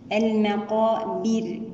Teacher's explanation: المقابر، نتم كسرة الباء ونرقق الراء لأنها وقفنا عليها بالسكون وقبلها حرف مكسور